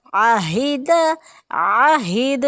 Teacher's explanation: عین وسط الحلق، ہا اقصی حلق